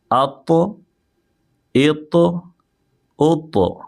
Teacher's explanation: تو ہم اس کو موٹا بھی کریں گے اور ساتھ ساتھ میں ہم یہاں پہ حروف قلقلہ یعنی آواز کو پلٹائیں گے